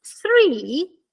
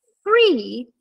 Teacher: la lingua tocca il ditino abbiamo una posizione interdentale mentre con abbiamo una frizione sul labbro questo non c'è bisogno